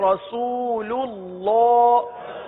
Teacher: اللہ کا لام پر پڑھیں گے